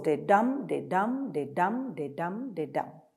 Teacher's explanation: it's a 10 uh syllable line with one stressed and one unstressed syllable · So the iambic pentameter consists of 10, it's a 10 syllable line with one stressed and one unstressed syllable. So it goes de-dum, de-dum, de-dum, de-dum, de-dum, like that.